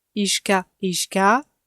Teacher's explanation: Le son allongé a est important.